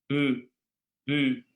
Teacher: Esse aqui, por exemplo, tem no português de Portugal e tem também no russo. É um i mais no meio da boca.